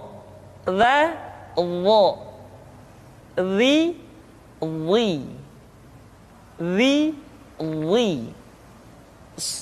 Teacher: pengucapan huruf dha diucapkan dengan menyentuhkan ujung lidah dengan dua gigi seri bagian atas sebagaimana kita mengucapkan huruf dha.